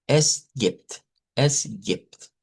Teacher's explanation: la B se cambia por una P en ese sonido · Eso casi se pronuncia como está ahí, vean, no hay mucho cambio, a excepción que si nos ponemos muy específicos, esta es una E abierta y no es como la E del español, y esta es una I corta